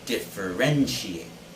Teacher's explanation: the stress should be on the third syllable